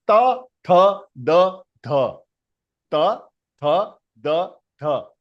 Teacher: We are touching, the tip of the tongue is touching the backside of your teeth, isn't it? And the frequency of this is 417 hertz. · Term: dantavya